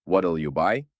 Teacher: у середньому та швидкому темпі will неминуче скоротиться до L